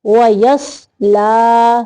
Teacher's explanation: صوت کی آواز جو ہے یہ موٹی ہو